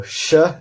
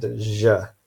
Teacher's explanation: for sh, our vocal cords are not vibrating, so it's voiceless, and in j, our vocal cords are vibrating, so it's voiced